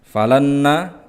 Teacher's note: nun sukun yang bertemu dengan nun maka dibaca idgham bi gunnah atau juga disebut idgham mutamatsilain.